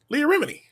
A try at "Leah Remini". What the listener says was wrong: it sounds like you're saying a remedy that's her name leah remini